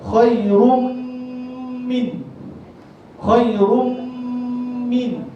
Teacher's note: Kita tahu tengah sebut huruf mim, masukkan gunnah